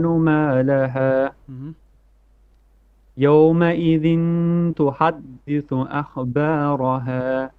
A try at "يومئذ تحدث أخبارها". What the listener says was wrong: To ha, middle throat ha. And then kha heavy. أخ. Okay, you're also bouncing the kha. You're saying akha ba. No, akhba.